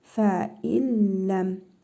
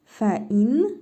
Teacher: Yenə idğam-ı biləqunnə qaydasıdır. Nun hərfini oxumuruq. Ləm hərfini isə şəddəli tələffüz edirik.